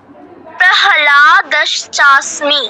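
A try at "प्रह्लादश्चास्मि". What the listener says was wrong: না না, হ পুরোটা না, হ অর্ধেক। প্রহ্লাদশ্চাস্মি। না, তুমি তো প্রহলা বলছো, প্রহ নয়, হ অর্ধেক। প্রহ্লা প্রহ বলো,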